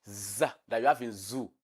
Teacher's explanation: that is voiced alveolar fricative